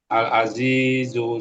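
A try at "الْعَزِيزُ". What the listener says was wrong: ঝাপ পেশ না, এটা দুইবার ঠিক আছে, শেষে একটু টানের মতো চলে আসলে আগের মতো, ওইভাবে করা যাবে না। ঝা পেশ ঝু স্পষ্ট। আল আজিজু। এটা তো ঝা, হরফ তো ঝাই। রজনা ঝা, এটা র ঝ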